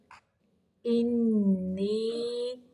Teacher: نی نون زیر یا کی آواز جو ہے یہ منہ سے نکالنی ہے، ناک کی طرف لے کے نہیں جانی